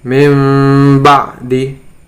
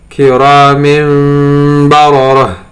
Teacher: Jadi mim itu bukan huruf iklab, justru huruf iklab hanya ba saja. Tetapi suara nun sukun dan tanwinnya berubah menjadi mim karena memang huruf ba dan mim satu makhraj